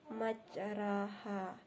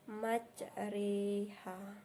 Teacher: mencondongkan bunyi fathah ke arah kasrah sehingga sekitar 2/3-nya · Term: imalah